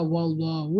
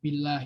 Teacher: wallahu lebih agak mencucu, sedangkan billahi lebih agak meringis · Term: tafkhim sama tarkik